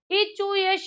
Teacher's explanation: तालू से ई बोला जाता है चा वर्ग बोला जाता है या बोला जाता है और सा बोला जाता है